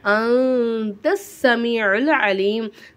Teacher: எஹ்ஃபாவோட எழுத்துறதுனால நூனை சாக்கின குன்னா செஞ்சு ஓதணும்